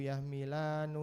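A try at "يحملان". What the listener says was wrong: Jangan nu Pak, nggak ada nu. Ni.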